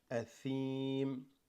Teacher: I know some Muslim cultures read the tha as a sa. That's wrong.